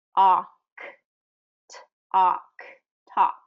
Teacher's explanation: So we're not getting that L any weight there or any pronunciation, and really that A, it's kind of an an O sound